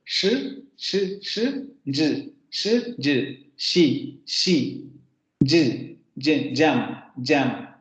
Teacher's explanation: las primeras se van a articular con la lengua normalita, con la punta de la lengua en los postalveolos. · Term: postalveolares